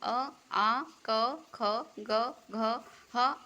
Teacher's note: कंठ से बोले जाते हैं